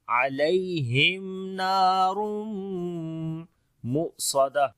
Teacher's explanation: حمزہ کے اوپر جزم ہے تو یہاں پر جھٹکا دے کر پڑھیں گے اور آواز بند ہو جائے گی · تنوین کے بعد میم آ گیا، ادغام غنے کے ساتھ کریں گے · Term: صفت شدت